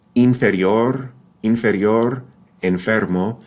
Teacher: the upper teeth actually touch the lip in this pronunciation